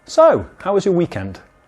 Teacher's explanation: you say so with slightly high intonation and then ask your small talk question